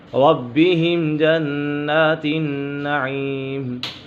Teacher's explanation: میم ساکن میں اظہار شفوی ہوگا، یعنی غنہ نہیں کرے گی، یہاں پر غنہ نہیں ہوگا۔